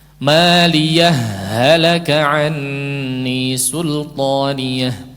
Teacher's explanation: Namanya idgham mithlaini, idgham mutamathilain, huruf-huruf yang sama, 2 huruf yang sama, seolah menjadi ha yang bertanda tasydid